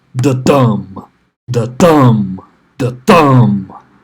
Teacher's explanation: So basically, within poetry, there's different beats, and these beats are called feet. Okay, so an iamb, which is what Shakespeare's lines are mostly built on, that has an unstressed beat followed by a stressed beat.